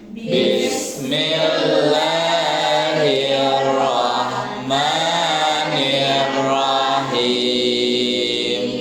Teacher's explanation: Ro sukun didahului harakat kasrah maka tipis hir.